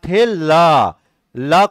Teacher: पार्श्विक व्यंजन जीभ के दोनों तरफ हवा निकल ही और बीच से नहीं निकला